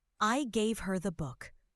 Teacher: Stressing book emphasizes what was given.